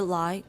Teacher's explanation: continue say the word lie and note how the tongue touches it touches near the center of the alveolar ridge belong the initial consonant and note how despite the closure formed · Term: clear l